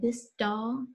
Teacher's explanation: if I say this doll my tongue might be pulled forward